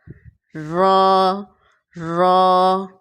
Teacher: را کو ادا کرتے وقت وائبریشن نہ ہو